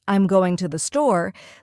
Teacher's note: For example, in the phrase, I'm going to the store, the stress naturally falls on going and store. The smaller words like I'm and to the R less emphasized and spoken quickly. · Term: stress pattern